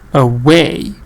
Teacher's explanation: make sure that you do not stress the schwa sound